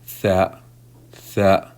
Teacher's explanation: The tip of the tongue touches the gum of the upper front teeth to produce the tha letter. Tha, tha. And you will obviously need to blow air through the oral cavity to allow the production of the letter.